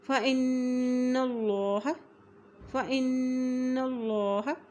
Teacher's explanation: اور نون کے پر غنہ بھی کریں گے، اور یہاں دیکھیں اللہ کے نام سے پہلے زبر آ گئی ہے تو اس لیے اللہ کا نام یہاں موٹا ادا کیا جائے گا · نون کے پر شد ہے اس لیے الف کی زیر کو نون کے ساتھ بھی ملائیں گے اور نون کے پر غنہ بھی کریں گے